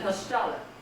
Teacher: Second syllable stressed.